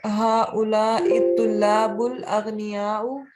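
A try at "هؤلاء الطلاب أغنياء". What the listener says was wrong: Tulabu aghniya'u. There is no alif lam. There is no alif lam. Aghniya'u. Haula ittulabu aghniya'u.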